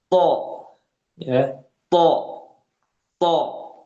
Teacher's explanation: Tebal tapi ditebalkan lagi dengan adanya itbaq, yaitu suaranya dikumpulkan, inhisor, mengepung suaranya itu sehingga terjadi penebalan yang lebih